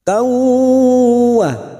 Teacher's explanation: Kauwa, karena kita terus maka fathah tanwin yang bertemu waw namanya bacaan idgham biguna, siap masuk dan mendengung masuk pada huruf berikutnya yaitu huruf waw dan mendengung selama 2 atau 3 harokat